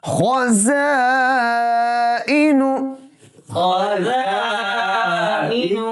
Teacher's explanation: ذائقۃ، ذائقۃ، ذائقۃ، ذائقۃ، وقف کے ساتھ ذائقہ، ذائقہ، زا کے ساتھ خزائن، خزائن، زا کی آواز ہے، دونوں اوپر نیچے کے دونوں دانتوں کو اچھی طرح خوب ملا کر پڑھیں گے تاکہ سختی کے ساتھ سیٹی کی آواز پیدا ہو جائے